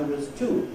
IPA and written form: wəz ‵tuː (two)